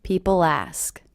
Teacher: I do hear that L as really linking to the beginning vowel sound.